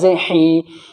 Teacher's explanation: या साकिन है और उससे पहले हा है, हा के नीचे जेर है तो या मद्दा होगा यानी या खिंचेगा